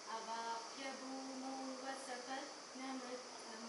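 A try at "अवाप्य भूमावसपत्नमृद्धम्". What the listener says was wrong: Avapya bhumau, not vasapatna. Yeah, if you say bhumau, then asapatna. Avapya bhuma vasapatna mritam.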